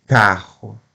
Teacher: Paroxítona, a sílaba forte é a penúltima, carro. Então a última é o ro, mas eu falo cá como sílaba forte, carro.